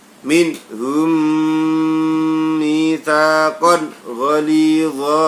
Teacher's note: idgham ma'al ghunnah. Ada mim sukun ketemu dengan mim.